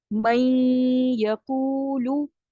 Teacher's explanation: میں، یہ جو نون کا غنہ آ رہا ہے یہ آپ کو بتاتا ہے کہ یہاں پہ ادغام ناقص ہو رہا ہے. ادغام تو کر رہے ہیں آپ لیکن ناقص کر رہے ہیں، کمپلیٹ نہیں ہو رہا، نون کا غنہ شامل ہے